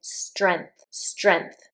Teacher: There are people who will take the G out completely.